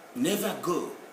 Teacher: So when the final R is followed by a consonant in British Standard English, it's not pronounceable.